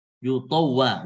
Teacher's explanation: Yutawwa wa-nya tipis, to-nya tebal seperti itu.